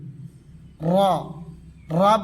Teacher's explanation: বলার সময় জিহ্বাটা কাঁপবে, কম্পিত হবে